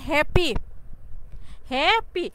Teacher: Stress on the first সিলাবল মানে কি প্রথম যে সিলাবলটা থাকবে এই সিলাবলের উপরে আমাদেরকে জোর প্রয়োগ করতে হবে। মানে এই সিলাবলটাকে আমরা ফোকাসে রেখে আমরা উচ্চারণ করব, বুঝতে পারছো?